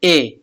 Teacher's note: ए कंठ तालव्य दीर्घ स्वर का उदाहरण है।